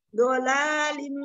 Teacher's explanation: tinggal ditempelkan sisinya, sisi lidah kiri ke geraham dan ujungnya di ujung lidahnya ditaruh di belakang gigi seri.